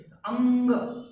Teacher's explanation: જ્યારે તેનો ઉચ્ચાર અંગ બોલો ત્યારે અંગ બોલવાની સાથે ગળા ઉપરાંત નાકમાં થરકાર લાગે છે. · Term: અનુનાસિક વ્યંજન